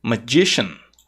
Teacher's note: essa terminação sian não é pronunciada como sian e sim como shan